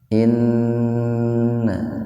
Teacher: Inna gunnah, nun bertasdid gunnah. Gunnah itu mendengung.